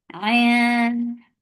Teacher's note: Ain from your throat, and the sound is short. Ain. This is ain should be from your throat for kasra give e sound.